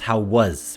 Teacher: Notice that how we say was becomes how was with a Z sound.